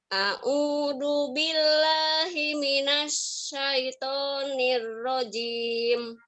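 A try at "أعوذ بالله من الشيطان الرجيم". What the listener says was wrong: Ya, a'udzu, zu-nya digigit lidahnya. A'udzu. Ya, a'udzu.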